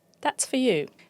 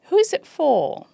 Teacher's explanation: When we pronounce the word for separately or in a strong position, we produce a long rounded or, which is similar to the words as more or core or door, floor, for. When it's in a weak position, it becomes a schwa.